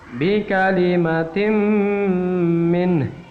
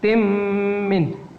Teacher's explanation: n-nya hilang atau dilebur kepada huruf mim yang ada di depannya. Bi kalimatim min tin mi.